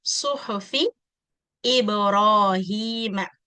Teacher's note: இந்த இடத்துல ப கல்கலா, ரா ஹெவி, ஹீம இந்த இடத்துல மது தொபி 2 கவுண்ட்ஸ்.